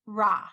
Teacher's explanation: When you have the ayin, it makes no sound, just the vowel.